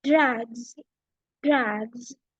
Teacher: So here I have the sah sound, okay, it is transformed into zah sound. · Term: voiced sound